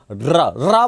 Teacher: जीवा को पहले कंपन करना पड़ता है जैसे मैंने कहा र र बोलने में जीवा पहले कंपन करती है इसलिए इसको प्रक पित कहते हैं · रा बोलने में जीवा पहले कंपन करती है, इसलिए इसको प्रकंपित कहते हैं। और प्रकंपित के साथ साथ ऐसा लगता है जैसे ये इसके उच्चारण में ये जीवा से लुढ़क रहा हो, इसलिए इसको लुंठित वर्ण भी कहते हैं।